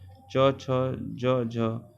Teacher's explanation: इन ध्वनियों के उच्चारण में स्पर्श भी होता है और ध्वनि घर्षण भी। उदाहरण में हिंदी में च वर्ग के व्यंजन च, छ, ज, झ स्पर्श संघर्षी।